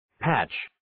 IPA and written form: pætʃ (Patch)